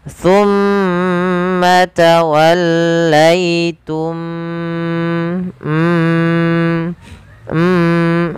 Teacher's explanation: adalah bacaan terjadi ketika mim mati bertemu dengan mim cara membacanya masukkan mim yang pertama kepada mim yang kedua dan ditahan suara mimnya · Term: Idgham Mimi